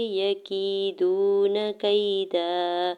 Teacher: یکیدون کیدا، یا کے زبر کو جلدی سے ادا کریں گے، یا ساکن سے پہلے کاف کے نیچے زیر ہے، یا مدہ ہو رہا ہے دو حرکت کھینچ کے ادا کریں گے